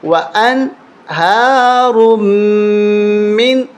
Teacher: ملانا، یہاں پر تشدید نہیں ہے، وان ہا رم من، لیکن یہاں میں غنہ نہیں کرنا اس لیے کہ نون ساکن ہے، اس کے بعد خا وہ بھی حروف حلقی میں سے ہے